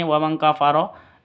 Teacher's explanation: Nun tanwin bertemu dengan Kaf samar didengungkan siap-siap ke huruf kafnya terus tanwinnya ditambah dengan ng sama dengan ini wamang kafaro ikhfa Hakiki ini juga sama ikhfa